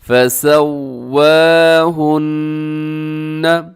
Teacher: نون مشدد ہے تو آپ نے یہاں پر غنہ کرنا ہے